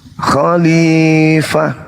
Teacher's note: Jangan fa-nya panjang karena di situ tak ada mat ketukan, gak ada. Di situ huruf ha.